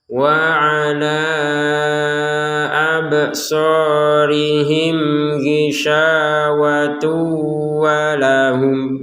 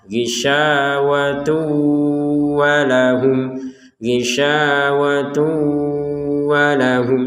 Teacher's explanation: Jadi di rongga hidung kita berdengung dulu di kata tu itu ya, baru ke wawu seperti itu. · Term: idgham bi gunnah